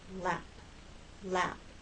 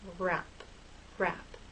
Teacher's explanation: But with R, your lips are more rounded and a little more tense.